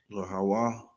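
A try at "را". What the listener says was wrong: That's a Ra.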